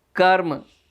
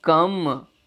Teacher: कर्म में र और म ध्वनि साथ साथ आती हैं। बाद में जो ध्वनि आ रही है वह पहली ध्वनि को प्रभावित कर लेती है, अर्थात म ध्वनि ने र को प्रभावित कर लिया और उसे भी म में बदल दिया, जिसका परिणाम हुआ कि कर्म शब्द रूपांतरित हो गया कम। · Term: पश्चगामी समीकरण, पार्श्ववर्ती पश्चगामी समीकरण